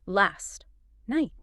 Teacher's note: You have to do this weird double tap with your tongue.